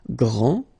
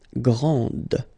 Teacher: This final D is not pronounced.